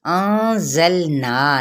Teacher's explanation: نون پہ اخفا اور نا پہ مد اصلی بالالف کا قاعدہ